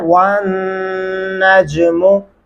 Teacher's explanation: वाव और नून के दरमियानी हिस्से पे आपने गुन्ना करना है